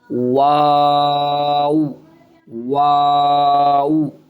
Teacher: वाऊ में दोनों होठ गोल होकर फिर मुंह खुलेगा ऊपर को। फिर होठ गोल हो जाएंगे। · واو میں دونوں ہونٹ گول ہو کر پھر منہ کھلے گا اوپر کو، پھر ہونٹ گول ہو جائیں گے. واو واو.